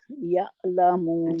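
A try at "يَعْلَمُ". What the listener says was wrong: झटका नहीं देना, हमजा नहीं जे बना दिया आपने। या यालम, यालम।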